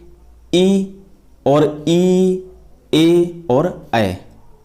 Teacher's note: अग्र स्वर होते हैं वे स्वर जिनके उच्चारण में जीभ का अग्र भाग ऊपर उठता है